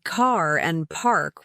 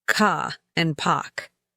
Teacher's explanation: We say car and park with strong R sounds. British speakers drop them. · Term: nonrootic r